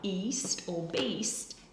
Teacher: the ee sound before the S would encourage the tongue to stay in that position